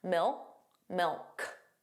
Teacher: So you put your tongue in the position of a K, milk, but you just don't push out that sound. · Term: final K sound